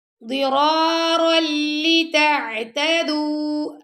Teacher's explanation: ضاد کو بھی موٹا پڑا، دونوں را کو بھی موٹا پڑا، اور را کو ہم نے یہاں لام سے ملا دیا